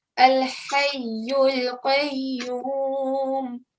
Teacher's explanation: make sure your ha, the sound comes from the middle